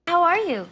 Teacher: también cayendo la entonación por ser pregunta WH